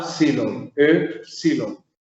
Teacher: Y esta E es un poco cerrada en su pronunciación.